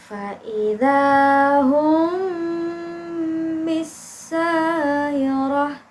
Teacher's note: menyamarkan bunyi mim yang kedua dia dibaca mendengung dan dengungannya itu ditahan sepanjang 2 atau 3 harokat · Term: Ikhfa Syafawi